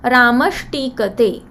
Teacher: So here after visarga t is there, so visarga is changed to sh, and we have Ramash tikate.